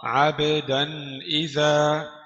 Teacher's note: دال تنوين بالفتح مظهر قبل الهمزة المكسورة